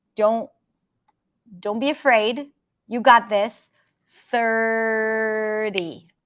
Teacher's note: 30, we have the flap T there